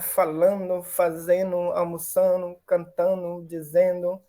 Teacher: Ele é dental alveolar, né? E de um D também, que é dental alveolar. Então, são muito próximos, acaba assimilando, cai esse D aí, né? Um processo fonético-fonológico que ocorre aí. · Fala rápido que cai o D, né? Ocorre um processo de assimilação aí